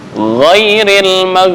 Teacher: Makhraj ghin di tenggorokan bagian atas.